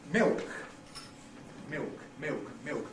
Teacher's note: It doesn't have a lateral in it at all, you see. It's not, it doesn't use the tongue tip. You don't use your tongue tip, you're saying milk, making a new diphthong, ill, or with the tongue.